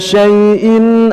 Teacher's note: jelaskan huruf shin yang keluar dari tengah lidah kita, kemudian tidak tertukar dengan huruf sin atau dengan huruf shad